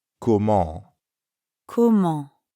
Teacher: Comment ends in the nasal sound en. To pronounce that sound, first say ah while dropping your jaw a bit.